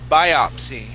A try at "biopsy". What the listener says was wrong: Okay, the word is pronounced biopsy. Okay, the stress is on the I. Instead of biopsy, it's biopsy. Biopsy.